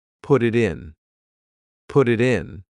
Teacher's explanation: your tongue is just tapping the top of your mouth to make a D.